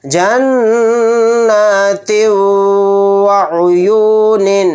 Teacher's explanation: تا کے نیچے دو زیر ہیں یعنی تنوین، تنوین کے بعد واو آ گیا تو یہاں پر بھی ادغام مع غنہ کا قاعدہ ہوگا۔ واو پر آواز کو روک کر غنہ کریں گے